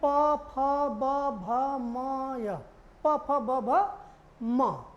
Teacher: Clear हो गया, देख रहे हैं, बोलिए आप, प फ ब भ म। यानी जब हम इस शब्दों का उच्चारण कर रहे हैं तो जो हमारा होठ है वो दोनों एक दूसरे में सट रहा है, छोड़ रहा है, पकड़ रहा है, छोड़ रहा है। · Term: ओष्ठ